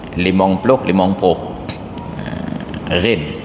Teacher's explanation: Di Aceh Selatan, lam itu yang jadi ghin, limong ploh.